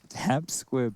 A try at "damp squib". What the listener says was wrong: That's squib, not squid.